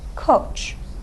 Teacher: Let's look at the vowel in our only and final syllable. Okay, it's back, it's rounded. You round your lips when you say o. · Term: back rounded vowel